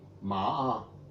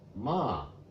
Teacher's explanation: So all those things are just the difference in pitch, exactly the same consonant, exactly the same vowel, and just the intonation or the pitch that change.